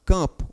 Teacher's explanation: a letra M, ela apenas provoca a nasalização do som vogal, do som da letra A. Apenas ele torna esse som nasal, certo?